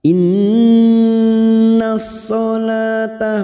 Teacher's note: nun yang bertasdid gunna musaddadah. Kita dengungkan selama 3 harokat.